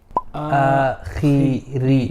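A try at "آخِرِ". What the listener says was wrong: No, you're making both flat. You're saying khiri. No. Khi. Akhiri. But try not to say khu. It's khiri. Khiri. Slight heaviness.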